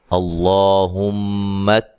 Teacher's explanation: اللہ، اس کو موٹا ادا کریں گے۔ ہم، میم مشدد پہ غنہ ضروری ہے